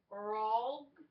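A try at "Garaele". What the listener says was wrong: Why are you adding a G at the end? Gar. All. Gar. All. Garl. Gar. All.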